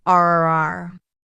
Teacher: her R sounds rolled like a drum